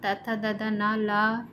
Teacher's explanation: दांत और जीभ के स्पर्श से बोले जाने वाले वर्ण दंत कहलाते हैं।